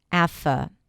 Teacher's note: The first sound is a as in cat. Then we have f, an F sound, and then a schwa. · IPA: /æfə/